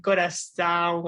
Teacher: es como que uno habla como si tuviera gripe, como que si tuviera gripe en la nariz, como que corazón, así, es difícil para mí.